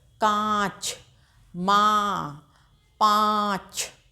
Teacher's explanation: इसके उच्चारण में मुंह और नाक दोनों का प्रयोग किया जाता है। नाक से भी ध्वनि निकलती है। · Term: अनुनासिक